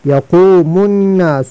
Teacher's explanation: زبان کے آخری حصہ اوپر نرم تالو سے لگا کر اس سے بڑا قاف ادا ہوتا ہے